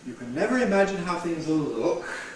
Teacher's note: Nucleus on look. What's the nuclear tone? Look. Yes, going up. Low rise. High head, stepping head here.